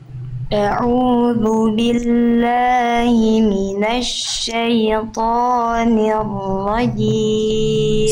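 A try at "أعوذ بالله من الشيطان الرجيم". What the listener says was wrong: Sip, tinggal i-nya jelaskan. Bagian nih. Minasyaitonir rajim. Syaitoni rajim.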